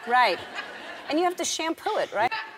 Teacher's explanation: Right, al final de una oración, subiendo de entonación, cambia una declaración afirmativa. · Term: entonación subiendo